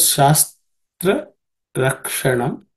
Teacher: In this word shastra rakshanam, ksha, the uk and sha, the sha is also cerebral sha